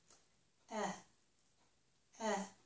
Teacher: it's a lax vowel, so the sides of my mouth will relax, and my tongue will not push against my upper teeth. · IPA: /ɛ/